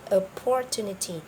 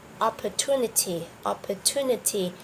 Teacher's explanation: the correct pronunciation is opportunity opportunity the stress is on the third third syllable